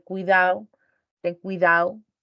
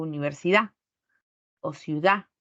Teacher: Enfatizo la vocal, pero la consonante se pierde. Esa es una elisión de la D, cuando está entre vocales o al final de la palabra.